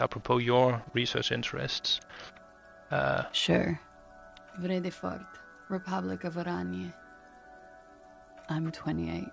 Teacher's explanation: she's a young woman i think she has a very breathy voice